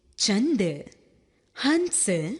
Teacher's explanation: अनुस्वार इसका उच्चारण नाक की सहायता से होता है।